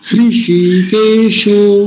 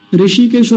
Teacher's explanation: तो मेरे साथ बोलिए, हृषिकेशो, ऋषिकेशो नहीं बोलेंगे कभी, वो जो हरिद्वार के पास एक स्थान है ना ऋषिकेश, वैसा नहीं बोलना, ऋषि, ह का भी उच्चारण आना चाहिए हल्का सा, क्योंकि वो आधा है